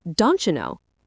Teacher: The T and the Y sounds merge together to create that ch sound again. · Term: assimilation